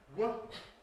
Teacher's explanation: double articulation, lips and the back of the tongue, ‘labial-velar’ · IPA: [w]